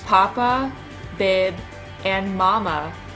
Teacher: bilabials are produced when the lips are closed sounds such as p and B are bilabial these are the first sounds babies produce many of the words · Many of the words relevant to a young child, papa, bib, and mama, start with bilabial sounds.